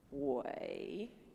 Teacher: so you gonna go down then up again